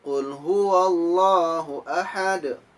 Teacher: Di situ huruf pertama dari ayat pertama surah Al-Ikhlas yakni huruf qaf. Huruf qaf makhrajul hurufnya yakni di pangkal lidah.